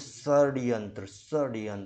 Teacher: जो दांत के ऊपर वाला जो आपका मसूड़े वाला हिस्सा है इस पे आपके जीभ की टकराहट हो रही है